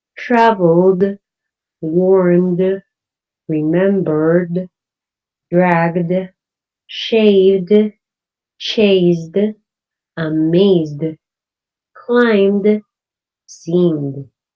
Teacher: the base form of the word ends in one of voic consonant so going to use the d sound